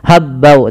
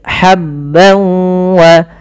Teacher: Linukhrija bihi habban wa, ha kecil, hati-hati jangan sampai dibaca habbau, tapi habban wa, tanwin bertemu waw sebagaimana yang tadi, yaitu idgham bi gunnah. Langkah pertama masukkan tanwinnya ke waw, hilang suara nunnya menjadi suara waw, kemudian ditahan gunnahnya.